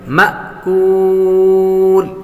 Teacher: الف پر جزم آ جائے تو وہ حمزہ ہوتا ہے، حمزے کو جھٹکے کے ساتھ پڑھیں گے